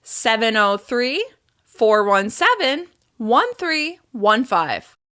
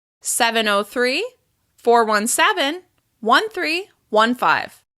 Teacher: I'm gliding down to the end on that last number, creating falling intonation on the number 5.